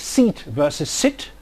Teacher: the difference between seat and sit is not just one of length only, it is really a matter of a combination of length and quality, because the 2 vowels involved have different positions on the cardinal vowel chart.